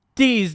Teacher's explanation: replace th with the z sound